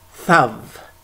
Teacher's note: A Yemenite would pronounce it without a dagesh, would pronounce it thav.